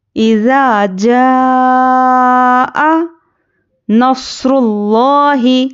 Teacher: جیم الف زبر اوپر مد، تو یہاں پر ہے بڑی اوپر مد ہے نا، تو یہاں پر کیا ہے، مد متصل کا قاعدہ ہے، اس کو 5 سے 6 الف کے برابر کھینچ کر پڑھنا ہے۔ تو حرف مدہ کے بعد حمزہ اسی کلمے میں ہے، اس کو 5 سے 6 الف کے برابر کھینچ کر پڑھیں گے، یہ مد متصل کا قاعدہ ہے، ٹھیک ہے۔